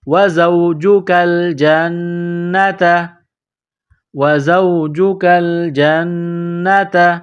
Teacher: تا زبر تا، گولتا ہے نقطوں والی، اس کو باریک کرنا ہے